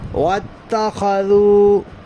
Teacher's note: ذال ہے، دونوں دانتوں کو ملنے نہیں دینا، زبان کی نوک دانتوں کے کنارے پر آئے گی۔